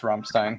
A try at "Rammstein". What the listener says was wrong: Rammstein. You gotta roll the R. Rammstein.